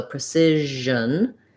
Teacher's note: have the mouth position that you would have for she or sugar and then just turn your voice on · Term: zh sound